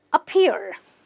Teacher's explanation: You're doing nothing. In fact, this is the shortest sound in English, also called the schwa sound